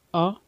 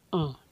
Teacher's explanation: निर अनुनासिक में केवल मुंह से निकलेगी और अनुनासिक में मुंह और नाक दोनों से निकलेगी